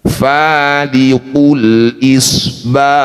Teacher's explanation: Ada udara lembut yang mengalir ketika bunyikan hak sukun.